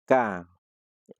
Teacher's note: Kemudian yang terakhir adalah kaf, pangkal lidah dan langit-langit yang keras, kaf. Kalau dikasih fathah, ka.